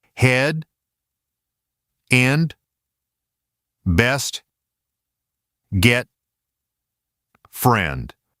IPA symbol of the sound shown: e